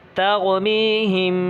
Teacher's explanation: دیکھیے یہاں تو پیچھے والا قاعدہ ہے کہ را ساکن سے پہلے زبر ہو تو کیا ہوگی؟ را پر ہوگی، یعنی موٹا پڑھیں گے اس کو